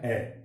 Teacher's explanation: मध्य स्वर है कि जीवा का मध्य भाग क्रियाशील रहता है, यानी वे स्वर जिसका उच्चारण करते समय हमारी जीभ का बीच का हिस्सा है वो क्रियाशील होता है। तो इस स्थिति के आधार पर जीवा की मध्य भाग की स्थिति के उच्चारण के कारण ये मध्य स्वर में रखा गया है ए, और मध्य स्वर एक ही होता है ए।